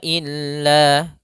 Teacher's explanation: Hua illa Kemudian pada lafal illa ada bacaan Mad thai'i yaitu adanya fathah bertemu dengan alif panjangnya dua harakat